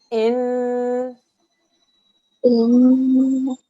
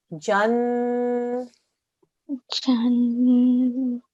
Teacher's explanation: Because it's a noon mashaddad, we're going to do a 2-second nasal sound.